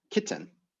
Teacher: I literally pronounce it, kitten, with like a fully pronounced T in there.